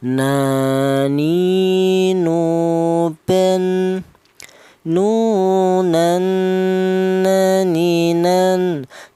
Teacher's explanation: huruf nun ini keluarnya huruf berasal dari ujung lidah menyentuh langit-langit mulut